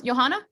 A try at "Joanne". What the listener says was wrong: Hi, it's Joanne. The H is silent.